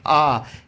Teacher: तो विवर्त यानी सर्वाधिक मुख खुलता है